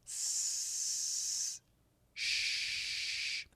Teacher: The SH sound can be really long. The tip of the tongue never touches.